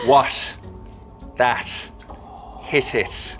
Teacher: a t sound made with a very soft closure at the tip of the tongue or not even really quite a full closure at all there's a slit left for the air to escape through what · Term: irish slit t